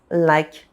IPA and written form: ʃpɑ̃s (Je pense)